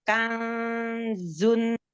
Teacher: ada nun sukun bertemu dengan zai, huruf zai, sukunnya didengungkan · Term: Ikhfa